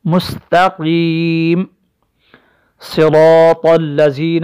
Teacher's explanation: را مفتوحہ کی وجہ سے بھی اس را کو موٹا پڑھیں گے